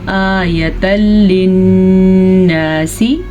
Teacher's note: حمزہ کے اوپر کھڑی زبر ہے تو ہم اس کو کھینچ کے پڑھیں گے · آیۃ للناس، یہاں پہ ہمارے پاس تنوین ہے اور تنوین کے بعد لام یا را میں سے کوئی حرف آ جائے تو ہم دونوں کو آپس میں ملائیں گے تو صحیح، لیکن بغیر غننے کے ملائیں گے. اسے کہتے ہیں ادغام بلا غنہ.